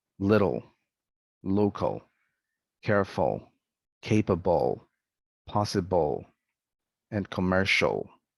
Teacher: some endings are pronounced with dark l